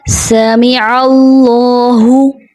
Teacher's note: اور اللہ کے لام سے پہلے زبر ہے، اللہ کا لام موٹا پڑھا جائے گا جو کہ عموماً باریک پڑھ دیا جاتا ہے. جیسے اللہ جو کہ درست ادائیگی نہیں ہے. · سین میں سیٹی کی ادائیگی نہیں ہوتی، اس میں بغیر سیٹی کے پڑھ دیا جاتا ہے. جیسے سمی.